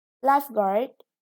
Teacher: lifeguard is a noun. The stress is on the first syllable.